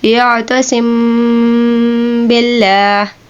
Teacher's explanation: हमने मीम साकिन पे रुक के गुन्ना अदा करके फिर आगे बा का वर्ड इस्तेमाल करना है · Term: इख्फा शफ़ी